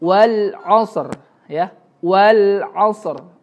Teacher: Ro-nya jangan sampai hilang ya, jangan dikorupsi.